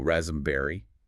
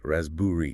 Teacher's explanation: This is a classic silent letter setup. The P is completely silent · what's key here isn't just the silent p, but also the phenomenon of vowel reduction in that middle syllable. We often replace the written vowel with a schwa sound.